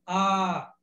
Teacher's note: Ou seja, esse a com um traço em cima, ele é longo aberto.